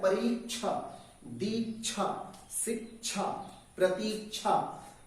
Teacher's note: इस तरह से जब आप बोलते हैं तो इन सब में छा से पहले आधा का की आवाज आती है · बीच में आधा का आ जाता है, ऑटोमेटिक आता है